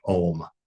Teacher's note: It starts guttural, it goes palatal, ooh, and ends labial. So it covers the whole distance and all the shapes of your mouth in order to say that.